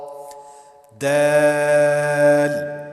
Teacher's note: دال کو بالکل کھینچ کر پڑھا جائے گا کیونکہ اس کے اندر بھی مد ہے